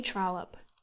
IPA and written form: ˈtrɒləp (Trollope)